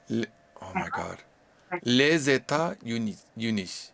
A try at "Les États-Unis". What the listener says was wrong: Non. Les États-Unis. Non. Deux liaisons. Les États-Unis.